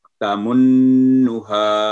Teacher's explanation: नून पर 2 सेकंड गुना करके तमन्नुहा, साथ ही उसको एकदम छोड़ देना है